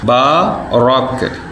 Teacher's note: را کو موٹا پڑھیں گے، با کو کھڑا کریں گے کیونکہ اس کے آگے الف ہے